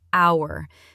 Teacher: It is spelled with the letter H, which is a consonant. But we do not say the H. It is completely silent.